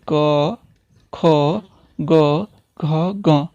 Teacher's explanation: कंठ से है। अर्थात जब हमारी अंदर से जो वायु निकलती है वह कंठ को स्पर्श करते हुए मुंह के रास्ते बाहर निकल जाती है। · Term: स्पर्शी व्यंजन